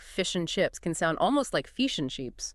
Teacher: Or another example, if you're tackling certain Australian accents, you might notice that the short I vowel is raised and fronted